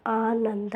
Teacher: ಆ ಅನ್ನೋದು ದೀರ್ಘ ಸ್ವರ ಆದ್ದರಿಂದ ಗುರು